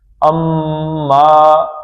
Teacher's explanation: اما میم کو کھینچنا ہے